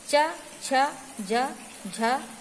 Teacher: हमारी जो जीभ है वो तलवे में छूकर निकलती है, तो ये तालव्य व्यंजन है।